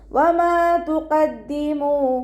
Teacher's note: വാവ് ഉച്ചരിക്കുമ്പോൾ ചുണ്ടുകളൊന്ന് സർക്കിൾ ചെയ്ത് കൊടുക്കുക. മീമിൻ്റെ കൂടെ അലിഫ് മദ് വന്നു 2 കൗണ്ട് നീട്ടിക്കൊടുക്കുക കേട്ടോ.